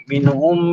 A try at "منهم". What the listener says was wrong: لا منهم هذه فيها قلقلة لا ما تقلقل منهم